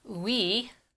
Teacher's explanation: W in and of itself is a combined sound because it's always an ooh followed by the vowel after it